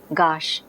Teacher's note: gas is becoming gash the aspiration is gone